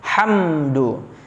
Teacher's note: mim sukun bertemu dengan huruf Dal nah di situ hukumnya yakni izhar syafawi dibaca jelas mimnya hamdu tidak boleh terlalu lama ya jangan didengungkan tetapi dibaca jelas